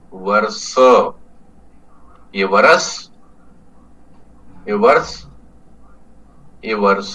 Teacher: लेकिन यहां विषय अंतर यानी विषय से हटके थोड़ी और दूसरी चीज है कि यहां वर्ष शब्द में व और र को हमने एक झटके में बोला है। · इसको हमने इसका समय लिया। वर वर व और र हमने बराबर समय में बोला। स को हमने थोड़ा सा लंबा बनाया। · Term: विलंबित अ